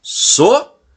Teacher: Então, dividindo as sílabas da palavra sofá, fica sofá. E a sílaba com a tonicidade maior é a sílaba fá.